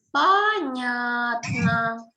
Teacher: And stress is in the middle on the sound ня. Понятно. And you have to O in the beginning, O in the end.